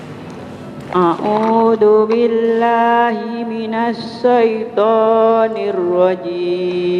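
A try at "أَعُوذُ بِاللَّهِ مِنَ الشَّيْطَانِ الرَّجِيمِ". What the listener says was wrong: Kurang tebal syaitan.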